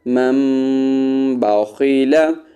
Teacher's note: اب یہاں پر دیکھیں ہم نے میم کو میم کے ساتھ ملایا ہے، جب نون کے اوپر چھوٹا سا میم لکھا ہوا آئے تو پھر اس وقت ہم نون کو سائلنٹ رکھیں گے اور میم کو ہم پڑھیں گے